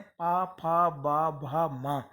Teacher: इनको बोलते समय हमारे ओष्ठ जो ओंठ हैं दोनों आपस में टकराते हैं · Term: ओष्ठ वर्ण